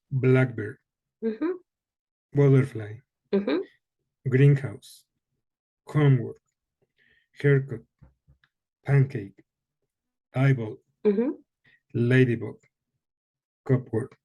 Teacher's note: on compound nouns the stress tends to be in that first part